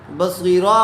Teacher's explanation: اخیر والے حرف پر جو آیت کرنی ہے دو زبر ہوں تو ایک زبر کے ساتھ الف پڑھا جاتا ہے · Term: آیت کرنا